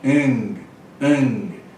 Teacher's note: O outro gama é pronunciado como N em vez de G.